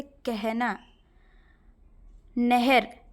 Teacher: भी रहे हैं है ना तो इसको थोड़ा सा याद रखिएगा ह के पहले आने वाले अ का ए जैसा उच्चारण होता है